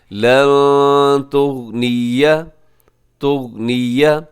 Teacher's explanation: اس میں نون ساکن کے بعد تا ہے تو یہاں اخفا ہوگا